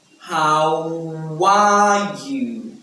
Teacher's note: Okay, now the phrase is "how are you?" When you're asking, it is "how are you?" How are you? Now we have connected speech there with the W sound, so we have "how are you?" How are you?